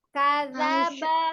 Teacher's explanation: Jadi kadzaba, jangan kadzaba, tidak naik ya. Kita tahu kanya pendek, tapi kadang teknik baca kita yang menaikkan maka terdengar panjang.